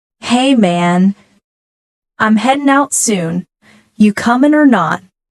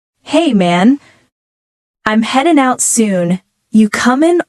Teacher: the dropped G in heading and coming